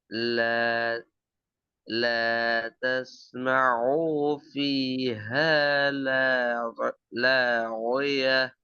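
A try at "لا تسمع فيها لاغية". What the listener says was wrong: திக்காம வரணும் திக்காம வரணும். இந்த ஐ நீட்டக்கூடாது.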